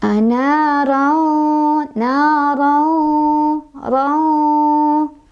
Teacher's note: tanwin fathahnya dibaca samar-samar, tapi ada dengungannya juga, ditahan 2, 3, atau 4. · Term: ikhfa ausath